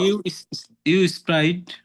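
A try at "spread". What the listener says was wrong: স্প্রাইট কি এটা? স্প্রিড না উচ্চারণটা?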